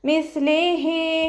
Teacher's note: സഇൻ്റെ മഖ്റജ് നമ്മുടെ നാവിൻ്റെ അറ്റവും മേലെ മുൻപല്ലിൻ്റെ അറ്റവും ചേർന്നിട്ടാണ് സ പുറപ്പെടുന്നത്. സൗണ്ട് കുറച്ചേറെ പുറത്തോട്ട് പോണ സൗണ്ടിൽ ഉച്ചരിക്കുക കേട്ടോ.